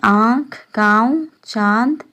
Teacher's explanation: अनुनासिक स्वर है जिनकी ध्वनि मुंह और नाक दोनों से निकलती है, जैसे आँख, गाँव, चांद में प्रयुक्त स्वर जिनमें चंद्र बिंदु होते हैं वो अनुनासिक स्वर होते हैं।